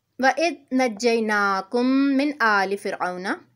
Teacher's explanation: میم ساکن کے بعد میم مشدد ہے، ادغام میمی ہے، میم کو میم سے ملا کر غنہ کر کے پڑھیں گے